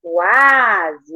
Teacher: Noite. E o quase é um ditongo crescente, porque vem uma semivogal, que é o U, com uma vogal. Então, quase, ele cresce, né?